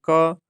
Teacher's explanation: क को बोल के देख लीजिए, क तो कंठ से निकल रहा है